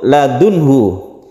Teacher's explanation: nun bertemu dengan ha, ini izhar, harus jelas nunnya, kemudian tidak berdengung juga · Min ladunhu ini idgham bila guna juga, tidak dengung.